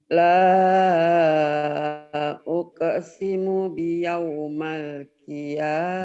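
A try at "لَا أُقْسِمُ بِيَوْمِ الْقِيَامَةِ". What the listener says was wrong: Biyaumil, kalau ada huruf jarbi jadi biyaumil, nggak biyaumal, biyaumil.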